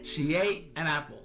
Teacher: The N sound at the end of an links directly to the A sound in apple making it sound like an apple. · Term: Linking